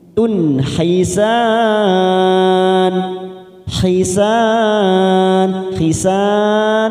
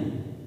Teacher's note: Ada dhamma tanwin pada huruf ta bertemu huruf ha, namanya idhar halqi. Kita baca jelas tanpa mendengung.